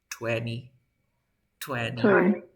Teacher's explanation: Cuando tenga NT y sonido de vocal, tampoco pronuncio la T.